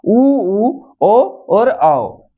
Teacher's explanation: वे स्वर जिनका उच्चारण करते समय होठों की आकृति वृत के समान गोल हो जाती है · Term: वृत्ताकार स्वर